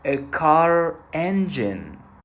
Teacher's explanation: even in non-rhotic accents, R reappears when followed by a vowel, so it will be a car engine.